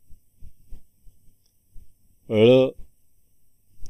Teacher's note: वर्ण आहे घोष किंवा नाद व्यंजन वर्ण आहे मूर्धन्य उगमस्थाने बघा जिभेचा शेंडा मध्यभागी टाळूकडे जातोय